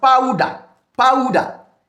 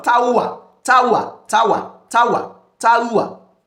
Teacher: One syllable, but glide from one to the second to the third vowel sound.